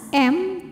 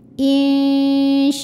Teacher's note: huruf mim bukan huruf ba di sini Hurufnya huruf wau maka mim sukun kita bunyikan dengan jelas m tanpa harus menahannya insyakartum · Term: izhar syafawi